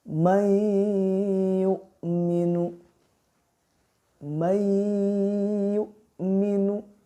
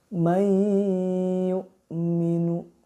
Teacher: Ya, lidahnya diangkat dan memakai gunnah. Dan gunnahnya itu 2 harkat atau 2 ketukan. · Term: idgham bi gunnah